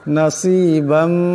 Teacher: নাসিবাম এখানে 12 পর 2 জবর তুলবিন, এরপর মিম আসছে, ঈদগাম হয়ে যাবে, ঈদগামের একারে পরিমাণ গুণ্য হবে